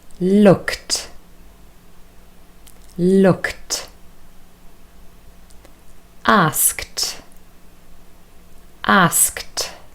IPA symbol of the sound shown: t